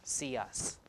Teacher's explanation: y is a front sound also so see us like this so we put in a y sound